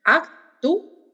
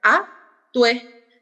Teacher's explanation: Como está acentuada la U, que es la cerrada, se divide. En cambio, actué, como está acentuada la abierta, va a ser actué, ¿sí? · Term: hiato